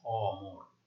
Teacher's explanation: এটাকে আমরা বলবো বিবৃত বা অ এর মতো বা স্বাভাবিক উচ্চারণ